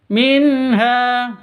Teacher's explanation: terang atau jelas, tidak boleh dengung karena bacaan izhar halqi.